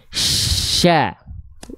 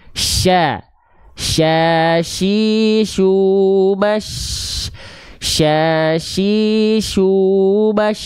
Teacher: cukup mengangkat bagian tengah lidah ke arah langit-langit tanpa disentuhkan, dialirkan dan disebar udaranya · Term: tafashi